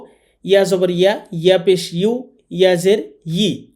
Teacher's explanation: ইয়া হরফটি উচ্চারণ করার সময় খেয়াল রাখবো যে ইয়া এটি জিহ্বার মাঝখান থেকে উচ্চারণ করতে হবে